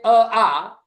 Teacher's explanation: अ आ इन दोनों का उच्चारण कंठ से होता है